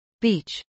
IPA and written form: biːtʃ (beach)